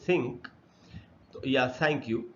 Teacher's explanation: अच्छा, T H से जब द बनता हो, टी एच से जब थ बनता है, जैसे थिंक तो या थैंक यू, तब वो अनवॉइस्ड होता है